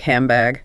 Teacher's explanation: The N changes to M because the following sound is B which is made with the lips just like M. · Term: Assimilation